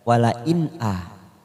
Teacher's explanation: nun sukun bertemu Hamzah wala Inna kita baca jelas tanpa mendengung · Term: izhar halqi